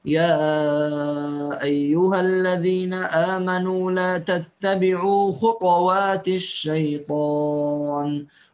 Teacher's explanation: الإمام شعبة يسكن الطاء مع القلقلة